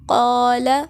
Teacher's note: جیسے ہم پڑھتے ہوتے ہیں قاف زبر الف قا اور لام زبر لا، قال، تو اس میں ہم دیکھیں الف سے پہلے کیا ہے، حرف موٹا ہے قاف، تو اسی وجہ سے ہم الف کو موٹا پڑھیں گے